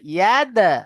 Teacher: দাল, দালের উপরে সাকিন এসছে, হুরফে কলকলা পাঁচটি অক্ষর, কফ ত বা জিম দাল, এই পাঁচটি অক্ষরের মধ্যে থেকে দাল এসেছে। তাহলে দালকে কলকলা করে আগের অক্ষরের সাথে আমাকে মিলিয়ে পড়তে হবে।